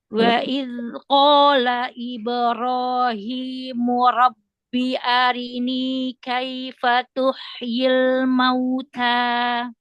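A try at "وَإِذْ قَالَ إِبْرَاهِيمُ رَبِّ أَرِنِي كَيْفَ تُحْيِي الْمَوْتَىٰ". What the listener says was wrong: Bukan di nun ya. Jangan ditekan di nun ya. Ini akhiri kalimat. Latan huruf akhiri kalimat. Robbi arini.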